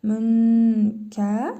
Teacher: nun hərfini burnumuzda tələffüz edərək bir əlif miqdarı uzadırıq